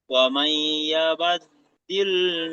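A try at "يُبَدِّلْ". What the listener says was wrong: ইয়াবা আছে, ইউবাদ,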